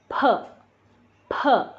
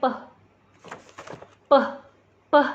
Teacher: Nah kalau P bacanya keluar angin, P, P. Nah jadi ini kan bergerak nih.